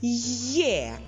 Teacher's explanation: Ми чуємо звукосполучення й е воно знаходиться на початку слова